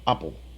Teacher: We have two letter P's in this word, but together they make just one P sound. The second syllable is unstressed and it's just like the dark L.